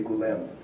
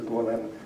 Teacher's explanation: the o goes to an u when it's not stressed